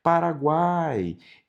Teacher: É a união de uma semivogal mais uma vogal mais uma semivogal na mesma sílaba. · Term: tritongo